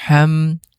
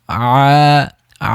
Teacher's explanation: হা গলার মাঝখান থেকে ঘষে ঘষে বের হবে, আইন আইন গলার মাঝখান থেকে একটু চাপ দিয়ে বের হবে। তাহলে আ আ হা সেম জায়গা থেকে একটুখানি পার্থক্য।